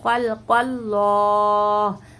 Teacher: ख्वा को और क़ाफ को दोनों को मोटा पढ़ेंगे